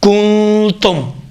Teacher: تیسرا نقطہ، نون ساکنہ کی آواز بینی سے خارج ہوگی · نون ساکنہ اور اخفا دو حرکت کے برابر میں مقدار میں کھینچا جائے گا